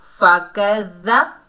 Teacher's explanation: فا کو بغیر کھینچے پڑھیں گے، کاف کو ذال سے ملائیں گے، ذال نرمی والا حروف ہے اور مشدد حرف ہے تو ہم نے مشدد حرف کو 2 مرتبہ پڑھنا ہے اور ذال کو نرمی سے ادا کریں گے فَكَذَّ۔